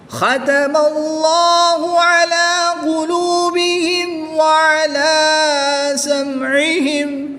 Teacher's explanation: خا کو اوپر پڑھیں گے، اس میں جلالت اللہ عز و جل کے لام سے پہلے حرف پر زبر ہے، تو اس لیے اس میں جلالت اللہ عز و جل کے لام کو پر یعنی موٹا پڑھیں گے